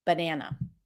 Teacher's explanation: When the as in cat appears before an n, it actually sounds a little bit like an e that opens up.